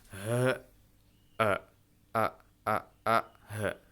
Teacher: Hamzah dan ha ini tempat keluarnya adalah di tenggorokan paling bawah.